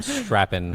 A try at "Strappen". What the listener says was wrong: It's Strappen. That's the running gag. Where'd the R come from?